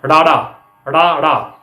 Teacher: ਫਟਕਵਾਂ ਡਾੜਾ, ਰ ਤੋਂ ਰ ਤੱਕ ਦਾ ਸਫ਼ਰ ਜਿਹੜਾ ਆ ਉਹ ਫਟਕਵਾਂ ਹੋ ਜਾਂਦਾ ਆ। ਇਸ ਦੇ ਉਚਾਰਨ ਵੇਲੇ ਜੀਭ ਤਾਲੂ ਨੂੰ ਛੋਹ ਕੇ ਫਟਕੇ ਨਾਲ ਹੇਠਾਂ ਆਉਂਦੀ ਆ। ਡਾੜਾ, ੜਾ। ਤੁਸੀਂ ਡਾੜਾ ਬੋਲ ਕੇ ਵੇਖੋ, ਤੁਹਾਡੀ ਜੀਭ ਉੱਪਰ ਤਾਲੂ ਨਾਲ ਲੱਗਦੀ ਆ, ਡਾੜਾ ਨਾਲ ਹੀ ਥੱਲੇ ਆ ਜਾਂਦੀ ਆ। · ਤੁਸੀਂ ਡਾੜਾ ਬੋਲ ਕੇ ਵੇਖੋ, ਤੁਹਾਡੀ ਜੀਭ ਉੱਪਰ ਤਾਲੂ ਨਾਲ ਲੱਗਦੀ ਆ, ਡਾੜਾ ਨਾਲ ਹੀ ਥੱਲੇ ਆ ਜਾਂਦੀ ਆ। ਇਸ ਕਰਕੇ ਇਹ ਫਟਕਵਾਂ ਵਿਅੰਜਨ ਮੰਨਿਆ ਜਾਂਦਾ ਆ।